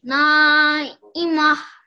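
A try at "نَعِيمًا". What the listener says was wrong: Just remember when we did our letters of the Arabic alphabet to make the ayn sound from your throat. Na'ima. Na'ima.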